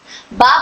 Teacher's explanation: बा में वाइब्रेशन नहीं होता है। बा बोलते वक्त लिप्स टाइट बंद होते हैं और फिर हवा से खुलते हैं।